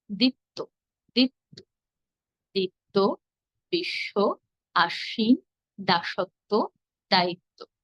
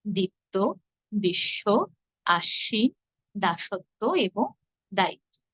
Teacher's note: দ্বিতীয় নিয়ম অনুযায়ী শব্দের শেষে ব যুক্ত থাকলে আমরা ব এর উচ্চারণ করবো না। কিন্তু যে ধনির সঙ্গে ব যুক্ত হয়েছে সে ধনিকে আমরা দুইবার উচ্চারণ করব। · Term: দ্বিত্ব